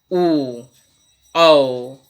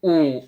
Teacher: ओ आपके होठ गोल होते हैं, औ थोड़े बड़े होते हैं और इसका जो जोर है वो कंठ पे भी पड़ता है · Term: कंठ और ओष्ठ